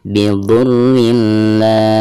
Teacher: cara membaca tanwin tersebut itu harus dimasukkan ke lam ya, tanpa ada guna ya. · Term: idgham bila guna